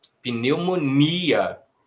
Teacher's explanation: Em português a gente não coloca a força no on, a gente coloca a força no i. Pneumonia. Se a gente coloca a força no i, é porque ele não é uma semivogal, é porque ele é uma vogal. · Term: hiato